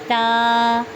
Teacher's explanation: تا زبان کی نوک اور ثنایا علیہ کی جڑ سے ادا ہوتا ہے